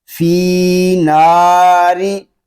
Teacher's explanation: نا را زیر ری، را کو ہم باریک پڑھیں گے کیونکہ را کے نیچے زیر آ گیا ہے